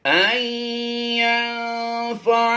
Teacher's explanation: نون ساکن کے بعد فا حروف اخفا سے ہے، تو یہاں پر اخفا کرتے ہوئے ہم نے غنہ زمانی کی آواز دینی ہے